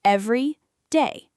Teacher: When we say everyday, two words, we pronounce both words clearly, with a tiny pause in between: every day. The second word, day, gets a little more stress.